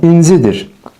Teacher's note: Zaman şəkilçisinin üzərindədir vurğu